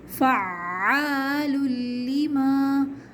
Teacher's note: عین پہ تشدید ہے، سختی کے ساتھ پڑھیں گے اور کھینچیں گے 2 کاؤنٹس